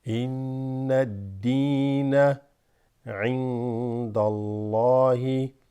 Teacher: Dal has a kasra with a ya extended.